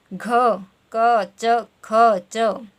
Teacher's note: ठीक है, जब आप क, ख और च का उच्चारण करें तो ये एकदम से उच्चारण हो रहे हैं और जब आप घ का उच्चारण करें तो थोड़ा इसमें कंपन पैदा हो रहा है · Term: घोष ध्वनि